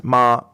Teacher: the first tone is a tone that is slightly above your regular speaking level but it's um it's constant so it's ma the second tone is as if it's a